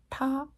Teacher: And if you just pronounce it the same way as you would in English, the T and the D, but move your tongue back to almost to the roof of your mouth, you're kind of curling your tongue back. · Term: retroflex